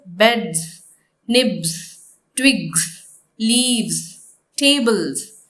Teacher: So in all these words, the last consonant is clearly understood as the voiced consonant d, b, g, v and b.